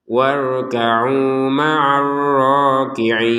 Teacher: warkau di sini kita panjangkan dua harakat